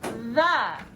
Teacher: that last vowel sound is what's called a schwa